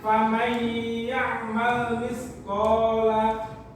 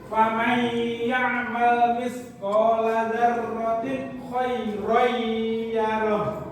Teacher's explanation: Ya itu adalah huruf idgham bihuna. Jadi cara membaca nanti langsung dimasukkan dengan cara berdengung selama 2 harokat